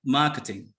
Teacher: very often when it comes to the British accent or British pronunciation, the t sound is always clear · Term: British t sound